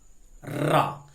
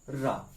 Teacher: तो देखेंगे जीभ मध्य में आ रही है और झटके से रा आगे पीछे जा रही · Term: लुंठित व्यंजन